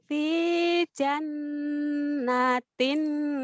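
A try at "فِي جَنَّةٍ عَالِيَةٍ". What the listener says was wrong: nanya jangan ditahan. Fi jannatin, nunnya ditahan, nanya dilepas.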